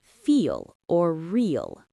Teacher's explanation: Instead of the tip of the tongue touching the teeth, the back of the tongue rises. It makes the word sound heavy. · When L is at the end of a word, it's deeper. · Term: dark L